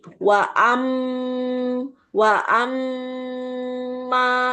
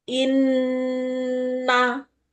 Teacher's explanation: wa amma itu sangat sempurna masuk hidung. Inna itu sangat sempurna masuk hidung. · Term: dengung